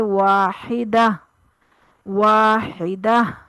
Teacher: گول تا کو ہائے ساکنہ میں بدل دیا جاتا ہے وقف کی صورت